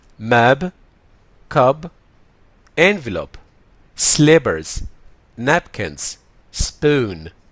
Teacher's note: مفيش أي puff of air أو مفيش، هي بنسميها unaspirated p sound